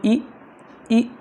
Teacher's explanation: अब जरा बोलो इ फील करो जीभ को। इ यानी जीभ का आगे वाला हिस्सा ऊपर उठा